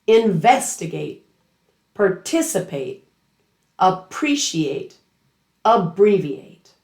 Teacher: Verbs ending in at fully pronounce that ending. You hear a clear a sound, but the main stress is still two syllables before that ending.